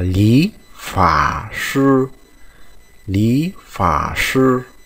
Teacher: cái thanh ba này chúng ta phải biến thành thanh hai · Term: biến đổi âm